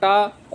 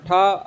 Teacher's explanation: मूर्धन्य मूर्धन्य मतलब मूर्धा यानी अघोष अल्प्राण में आता है ट अघोष महाप्राण में आता है ठ